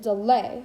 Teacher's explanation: an unstressed syllable followed by stressed syllable